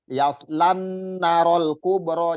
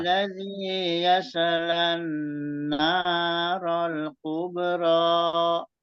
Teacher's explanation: selain yaslan na-nya juga ada alif, itu matobi'i. Jadi dipanjangkan 2 harokat juga. Jadi bukan yaslan narol kubro, jadi na-nya kecepatan, hilang matobi'inya.